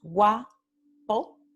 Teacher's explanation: el diptongo wa, que tenemos primero la semivocal y luego la vocal pura o completa. Entonces es un diptongo creciente porque la semivocal viene en la primera posición.